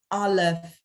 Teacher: in the word Aleph itself, it's a glottal stop. It happens to have a vowel A behind, an R vowel behind it, but it could have had any other vowel if you wanted.